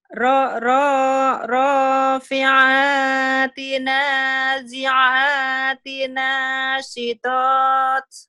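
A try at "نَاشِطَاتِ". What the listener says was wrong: Nah, shinnya kurang gede cuman. Nashitot. Nashitot.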